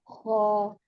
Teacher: खुला है मुँह फुल खुला है, ख्वा नहीं थोड़ा-सा गोल होता है